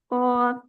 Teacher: tenggorokan bukan jadi tidak ba eh terdengar terdengar lebih kuat banget jadi qnya tidak terlalu masuk ke tenggorokan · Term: Qalqalah